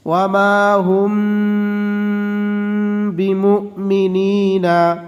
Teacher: মিম সাকিনের বাম পাশে বা অক্ষর পাইলে মিম সাকিনকে গুন্নাহ করে পড়িতে হয়। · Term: মিম সাকিনে ইকফা